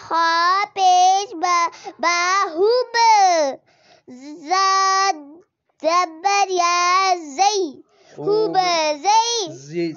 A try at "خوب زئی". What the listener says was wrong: سیٹی نہیں کریں.